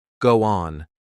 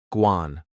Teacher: For example, in the phrase, go on, the O in go links to the O in on, so it sounds more like guan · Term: Linking